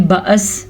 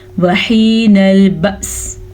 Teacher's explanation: حمزہ بھی ساکن ہے، وقف کیا ہم نے تو سین کو بھی ساکن کر دیا، تو دونوں کو ساکن پڑھیں گے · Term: دونوں ساکن